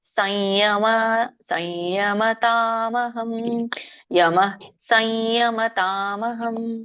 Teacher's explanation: ಅಲ್ಲಿ ಅನುಸ್ವಾರ ಮುಂದೆ ಯ ಇದೆ ಅನುನಾಸಿಕ ಯ ಹಾಗಾಗಿ ಯ ಪದನೇ ಅನುನಾಸಿಕವಾಗಿ ಬರುತ್ತೆ